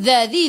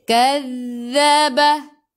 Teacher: hujung lidah keluar pada gigi depan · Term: huruf zal